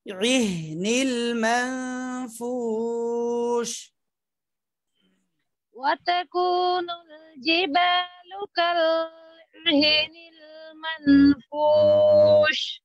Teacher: আইনটা চাপ দিয়ে হাটা খুব নরম করে